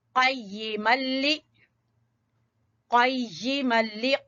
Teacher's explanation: जबान की जड़ से क़ाफ